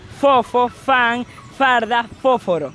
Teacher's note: Fonemas labiodentales son aquellos en los que intervienen el órgano de los dientes y los labios, siendo el labio inferior y los dientes superiores